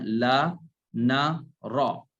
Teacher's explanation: لام نون اور را میں زبان کا کنارہ لگتا ہے اس کی دانتوں کی جڑ سے، دانتوں کے مسوڑے سے